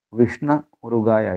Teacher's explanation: అది విష్ణులో ఓకారం పోతుంది. ఎందుకంటే ఆ ఈ ఊ ఇటువంటి వచ్చినప్పుడు ఎకారం కానీ ఓకారం ఉంటే పోతాయి. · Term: సంధి